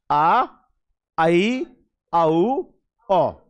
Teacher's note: इनमें आपका मुंह क्या होगा, लगभग 60% खुलेगा, या कह लो अर्ध विव्रत, आधा मुंह खुलेगा।